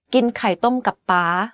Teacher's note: The last word and syllable of this sentence is in high tone. You can hear that it's the only word in this sentence that has a high pitch without a falling tone.